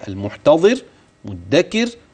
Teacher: الراء الساكنه لاجل الوقف وقبلها كسر ترقق